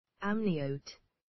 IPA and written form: ˈæmnɪəʊt (amniote)